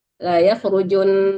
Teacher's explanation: Nunnya yang didengungkan tapi jangan ju-nya yang dipanjangkan ya.